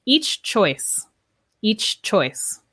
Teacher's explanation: notice there you do hear the ch two times